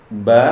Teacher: tempat keluar huruf dari dua bibir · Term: huruf ba